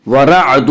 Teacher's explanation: یہاں را کے اوپر زبر ہے اس لیے را کو پر پڑھیں گے